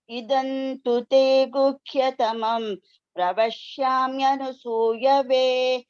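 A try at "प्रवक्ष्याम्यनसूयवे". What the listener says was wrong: It is not anusuyave, that is different. Anasuyave. This is anasuyave, not anu. Don't say that. Anu is different. Anasuyave.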